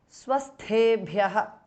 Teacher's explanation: Tha is mahapranah. Bha is also mahapranah.